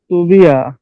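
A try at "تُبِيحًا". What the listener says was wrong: এটা হা হবে, তুবিহা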